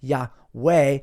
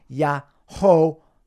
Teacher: the W sound from the Hebrew Vav, Wah, Yahweh, started to be pronounced as a V sound with an A after it. So Yahweh became Yahovah instead.